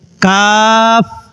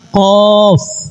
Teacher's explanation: এর মাঝে কাফ হবে পাতলা, কফ হবে মোটা। এই দুইটি হরফের মাখরাজ এবং সিফতের মাঝে অনেক দূরত্ব রয়েছে।